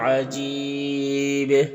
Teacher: وقف کریں گے تو با میں قلقلہ ہوگا اور مد عارض وقفی ہوگا، تو اس طرح سے پڑھیں گے۔